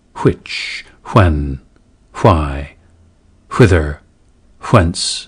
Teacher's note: WH should be aspirated in words like which, when, why, whither, whence, etc., where today's dominant pronunciation is w.